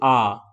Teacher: विवृत स्वर के उच्चारण में मुख द्वार पूरा खुला होता है यानी कि बहुत आपको वाइड खोलना पड़ेगा मुंह को तब जाकर के ये वाला वर्ण का उच्चारण आपका हो पाएगा